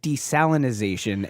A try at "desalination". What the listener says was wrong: No, there's no Z in the word. It's desalination.